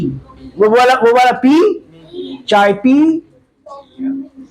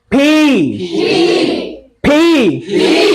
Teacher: तो it comes out with a puff of air, with a puff of air. हाँ पी, extra puff of air बाहर निकलता है.